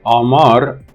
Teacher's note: the Ra, which is at the end of the word, is devoiced